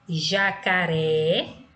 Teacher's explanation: Jacaré, a sílaba pronunciada com mais intensidade é a última, tá? Então, sendo a última, é uma palavra oxítona, ou seja, uma sílaba tônica na classificação oxítona, ok?